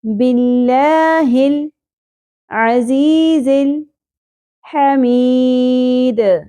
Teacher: باللہ العزیز، کے اوپر زبر ہے، شارٹ رکھنا ہے، می، زیر کے ساتھ یا ساکن ایک الف کے برابر کھینچنا تھا، لیکن دال ساکن ہونے کی صورت میں، وقف کی صورت میں مد عارض وقفی ہوگی اور مید 3 الف کے برابر کھینچنا ہے۔